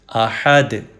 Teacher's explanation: دال پہ کلکلا یا ایکو ساؤنڈ پروڈیوس کریں گے